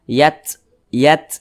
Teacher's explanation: ketika membaca huruf ta Yang sukun seperti ini maka ada desisan angin yang keluar daripada mulut kita karena huruf ta memiliki sifat Hames